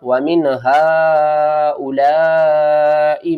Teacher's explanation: یہاں پر مد متصل ہے، 5 الف کے برابر کھینچ کر پڑھیں گے